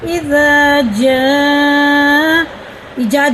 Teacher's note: جیم الف مز زبر ج، حمزہ زبر آ ج، 4 الف کے برابر سے کھینچ کے پڑھنا. اذا جا جا نہیں پڑھیں گے.